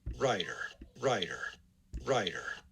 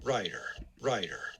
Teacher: rather than the schwa r transcription i'd rather use the syllabic r the tail end because that's more appropriate there's not really a